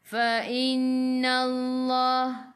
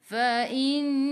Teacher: Nun ada sabdu, tekan ke dalam nun dan dengung 2 harakat wajibul gunnah.